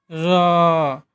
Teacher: र उच्चारण करने पर एक कंपन उत्पन्न होता है, इसलिए इसको प्रकम्पी व्यंजन कहा जाता है।